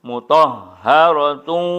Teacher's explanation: Mutahharatu, tanwin mati menghadapi wawu, itu namanya idgham bi gunnah atau idgham ma'al gunnah. Masukkan tanwinnya, dengungkan, tahan satu alif dua harkat